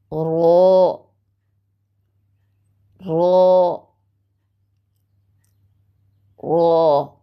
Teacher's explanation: ज़बान की नोक की पुश्त जो है वो ऊपर वाले दांतों के मसूड़ों से जाकर लगती है, तो लफ्ज़ या हर्फ रो अदा होता है